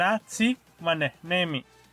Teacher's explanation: Es un sonido fricativo glotal que puede parecerse al ja del español, solo que se apoya en la glotis y no en la parte trasera de la lengua, generando una aspirada más sutil. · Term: el saltillo